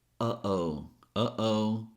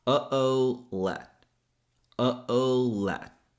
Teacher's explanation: Or you can use a glottal stop, which is when we block the air by closing the vocal cords. A great way to practice this is to say, uh-oh, uh-oh.